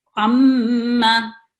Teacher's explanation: इसी तरह अम्मा, इसमें अम और माँ का मरकब है ये लफ्ज अम्मा, और मीम साकिन पे जो आवाज है वो 2 सेकंड के लिए आप ठहरा के फिर मुत्तहरिक लेटर को आप अदा करेंगे। याद रखना है कि गुन्ना की आवाज 2 सेकंड जरूर लंबी होनी चाहिए, इससे ना कम हो ना इससे ज्यादा हो।